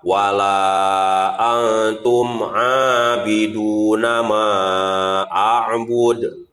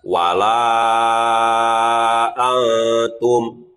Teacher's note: Nah, wala antum. Jadi dalam la dibacanya 5 ketukan. A dibacanya 2 ketukan.